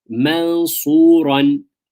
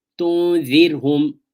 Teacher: Hence the meaning, hence the word ikhfa means to hide. The noon sakin or tanween hides itself almost under the next letter.